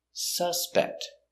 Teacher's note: it's a noun so distress is first syllable suspect not suspect suspect is a verb this is a noun · This is a person. It's a noun. So the stress is on the first syllable.